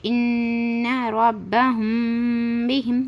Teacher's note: اخفاء شفوی یعنی میم ساکن کے بعد با آئے تو غنہ کے ساتھ اخفاء بھی ہوگا، یعنی میم ساکن کے بعد با آئے تو غنہ کے ساتھ اخفاء بھی کرنا ہے